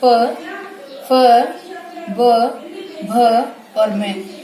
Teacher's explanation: ओष्ठ्य मतलब क्या होता है, दोनों होठ जो होते हैं, मतलब जिन वर्णों के व्यंजनों के उच्चारण के समय दोनों होठ आपस में मिलते हैं वो होते हैं ओष्ठ्य व्यंजन